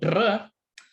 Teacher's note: So dr is a perfectly fine trill. You're just using your lips. So it's called a bilabial trill.